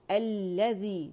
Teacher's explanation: اور الذی کیا ہے، یہاں یہ لام شمسیہ ہے اور ایک لام ساکن تھا اور ایک جو تھا شمسی لام، تو لام جو ہے لام تعریف لام شمسی کے اندر مرج ہو گیا تو یہ مشدد ہو گیا